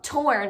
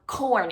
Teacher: the T sound is made in the front of your mouth, which is where we know the tongue is just tapping the roof of the mouth, right behind the teeth